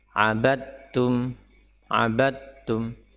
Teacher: sini huruf Dal bertemu dengan ta Dal sukun bertemu dengan ta huruf dal dan Ta sama makhraj tetapi berbeda sifat huruf Dal memiliki sifat ya dia jahr sedangkan ta hams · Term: idgham